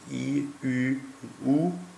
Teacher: die hochzungenvokale sind i u